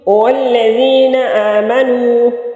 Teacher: لام مشدد ہے، 2 دفعہ پڑھا جائے گا، ایک یہ پیچھے ملے گا، دوسرا خود بھی پڑھا جائے گا